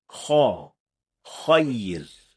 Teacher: the fullness of the letter is done by raising the back of the tongue and lowering its middle part, creating a hollow space inside, causing the letter to sound full or heavy. So, we should say kha, khayr, not kho, khayr. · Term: heavy letters